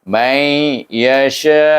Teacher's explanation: kita idghamkan nun sukun bertemu dengan huruf ya yang mesti diidghamkan dia dan dengung. Ya, itu ma'al gunnah maknanya dengung.